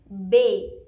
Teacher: ada bibir dua yang bisa menghalangi bunyi tersebut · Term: bunyi konsonan